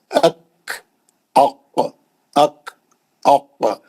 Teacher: काफ में खलखला नहीं है।